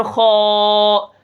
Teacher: خا کو بھی ہم موٹا کریں گے، اس کے ساتھ الف جو ہے وہ بھی موٹا ہو جائے گا